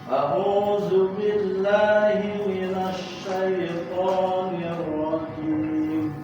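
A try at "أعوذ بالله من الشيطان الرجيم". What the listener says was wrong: Yang sama dengan sya juga tidak dipanjangkan syaitan lah. Syaitani.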